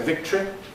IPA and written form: ˈvɪktri (victory)